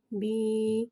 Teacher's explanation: با یا زیر بی. یا ساکن سے پہلے زیر آ رہا ہے، یا مدہ ہو رہا ہے، لہٰذا یا مدہ کو ایک الف یعنی 2 حرکات کے برابر کھینچ کے پڑھیں گے